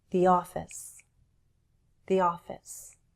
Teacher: And I link the two words with the help of /y/ a y sound.